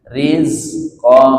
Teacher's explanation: Ini yang disebut dengan ihfa ab'ad, sangat jauh. Ba'id betul-betul kedengeran suara angnya.